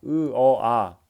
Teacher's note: 그 어 아 점차점차 턱이 벌어지고